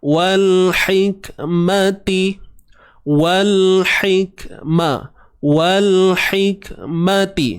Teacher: Ha pedas wal hi. Ha pedas tengah kerongkong sempit kan.